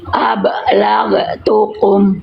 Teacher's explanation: Ba sukun qalqalahkan pantul.